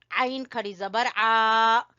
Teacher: आइन को भी गले के दरमियान से निकालना है। आइन और हा का एक ही मखरज है।